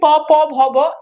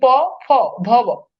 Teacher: দুইটা ঠোঁট একত্রিত হয়ে ঠোঁট থেকে তৈরি হয়, এই জন্য এগুলোকে বলা হয়, এগুলো হচ্ছে ওষ্ঠধ্বনি।